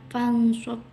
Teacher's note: Setelah itu di ayat ke-7 fansob, hukum bacaan ikhfa hakiki karena nun mati atau sukun bertemu dengan huruf shad dan cara bacanya samar